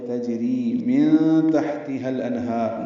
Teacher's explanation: جیم ساکن پہ قلقلہ ہے